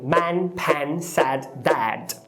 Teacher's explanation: Essa vogal ela é super baixa. Isso quer dizer que você precisa deixar o queixo cair. Você precisa pensar que vai falar o A do português, mas depois que o seu queixo já estiver caído, você vai lá e mete um E. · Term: ash